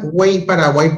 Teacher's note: Cuando, por ejemplo, tú veas estas palabras, güey o Paraguay, donde la Y suena como I latina, esa Y se considera una vocal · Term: vocal cerrada